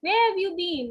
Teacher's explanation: a nasal sound is also coming along with the glottal sound